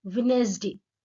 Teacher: उसमें जो डी की साउंड है वो नहीं आती है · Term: एलिजन